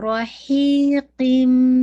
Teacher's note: غنہ بھی جسے کہا جائے اکمل غنہ ہے، ٹھیک ہے نا، کہ مکمل آواز جو ہے قن کے بجائے قم آ رہی ہے، تنوین کی آواز میم میں بدل گئی ہے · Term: ادغام